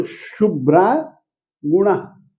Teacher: तो शुभ्रा गुणः यह था मूल वाक्य, परंतु शुभ्रा में ग पर में होने के कारण से हमने विसर्गों का लोप कर दिया